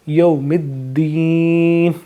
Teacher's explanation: یہاں پہ کیونکہ یہ مد لین کا قاعدہ لگ رہا ہے تو یہاں پہ لمبا نہیں کریں گے، یوم الدین، اس طریقے سے پڑھیں گے۔